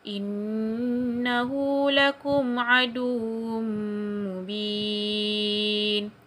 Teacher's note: Lepas tu dekat bahagian aduwwum mubin, tanwin bertemu dengan huruf mim. Itu adalah idgham ma'al ghunnah, kena dengung. Lepas tu mubin tu kena panjangkan sikit sebab dia mad arid li sukun.